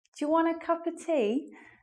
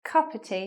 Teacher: So the of joins the words before. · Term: elision